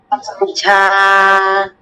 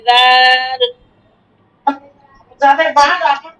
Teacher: নরম করে হবে, জিহ্বাটা, জিহ্বার আগাটা আপনার দাঁতের সাথে লাগাতে হবে